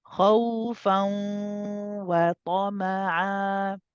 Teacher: So I should hear not khawfa, it's khawfa. The sound is also going through the khayshum. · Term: gunna